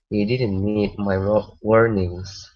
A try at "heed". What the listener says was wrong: All right, so instead of need, this is an H here. he didn't heed my warnings.